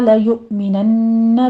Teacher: لیؤمنن میں حمزہ پر جھٹکا دیں گے ، آگے نون مشدد ہے، غنہ واجبہ کر لیں گے، بھی